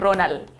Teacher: in really Chilean version would be like Ronald. No D.